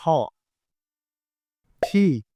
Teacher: ইংরেজিতে ট হয় না হয় হচ্ছে ঠ